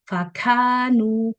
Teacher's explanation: Jadi hamsnya tuh terlalu berlebihan. Harusnya normal aja, alami.